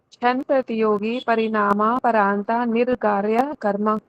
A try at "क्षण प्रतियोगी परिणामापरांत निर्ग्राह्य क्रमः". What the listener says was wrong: निर्गारिया नहीं, फिर से बोलो। गारिया तो है ही नहीं। निर ग्राह्यः। ग्राह ग्राह